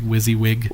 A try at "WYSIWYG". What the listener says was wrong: Wizzy, not Wisey.